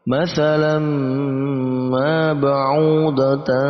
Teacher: Di situ juga ada tanwin yang bertemu huruf mim, maka masuk juga sama dalam kategori idgham bi gunnah. Kita masukkan tanwin ke dalam huruf mim, maka mimnya ini bertasdid, lalu kita dengungkan huruf mim.